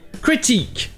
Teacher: La première voyelle a toujours le son court I non accentué qu'il y a en anglais · ça vient directement du français, eh bien on utilise le son du I en français. Mais ça, seulement pour la deuxième voyelle.